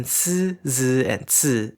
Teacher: /ɯ̟/ is pronounced as a central [ɨ] after /s/, /z/ and /t/ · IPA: [sɨ], [zɨ] and [tsɨ]